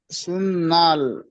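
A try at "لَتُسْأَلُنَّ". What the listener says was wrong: সুন্না হচ্ছে কেন? লুন না হবে, লাম নুন পেশ লুন, নুন জবর না। এটা লাম তো,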